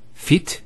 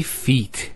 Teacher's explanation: there's a elongation of the e sound